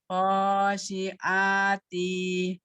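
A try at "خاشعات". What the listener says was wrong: T-nya pendek. Khosyi'ati.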